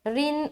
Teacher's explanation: रा बारीक रहेगी और नून से मिलाते हुए नून के ऊपर शद आ गया तो हम यहाँ पर नून मुशद्दद का गुन्ना करेंगे